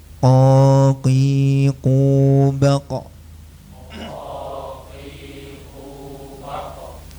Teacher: pangkal lidah yang bagian dalam ya menempel ke langit-langit mulut yang lunak atau yang empuk ya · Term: qof